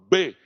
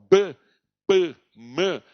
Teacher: Por exemplo, se você vai falar o B, você não consegue falar o B, P, M, sem unir os lábios. Por isso que eles são chamados de fonemas bilabiais, tá?